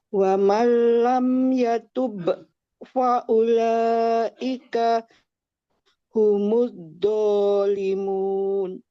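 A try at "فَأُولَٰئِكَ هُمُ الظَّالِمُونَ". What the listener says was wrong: Munnya kurang panjang sedikit lagi. Zolimun.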